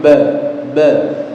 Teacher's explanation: tidak boleh ada aliran nafas yang mengalir · huruf ba tempat keluarnya adalah kedua bibir